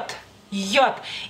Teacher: la lengua apenas apenas y toca el paladar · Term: jota